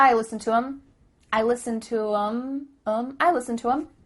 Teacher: the word them has the th cut out